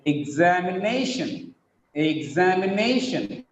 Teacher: Exam also gets a stress, but it is comparatively weaker than nay. Nay gets primary stress, exam gets secondary stress.